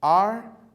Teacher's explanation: O ar é a sílaba mais forte, a tônica. É a antepenúltima. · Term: sílaba tônica